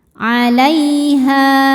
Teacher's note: Lai ada harfulin sebab ada ya sukun sebelumnya fathah. Cara bacanya dilembutkan atau dilunakkan. · Ha ada mad thabi'i dzahiri. Sebab ada alif didahului harakat fathah. Cara bacanya panjang dua harakat.